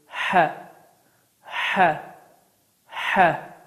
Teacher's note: Hə hərfinin məxrəci, yəni çıxış yeri boğazın ortasıdır. Boğazın ortası tam sıxılaraq, Boğazın ortası tam sıxılaraq və hava axını sıxıntı bir formasında tələffüz olunaraq Azərbaycan dilində olan h səsinin sıxılmış formasıdır.